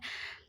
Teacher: स्थान दंत है जब हम त का उच्चारण करते हैं त तो जीभ दांत को छूते हुए इसका उच्चारण करती है